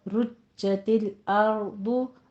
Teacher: रुज्ज में आप देखिए तशदीद है, सख्ती के साथ अदा कीजिए